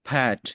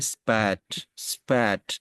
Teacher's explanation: इसको एस्पिरेटर कहते हैं तो ठीक है तो इसकी example पैट you can feel a small बस्ट बस्ट if you पुट your hand in front of your mouth